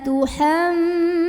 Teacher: ada gunnah musyaddadah karena huruf mim bertasydid, maka cara membunyikannya didengungkan. Jadi bunyinya bunyi dan kita tahan kurang lebih 2 harokat.